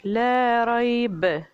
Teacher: جب با پر سٹاپ کریں گے تو قلقلہ کریں گے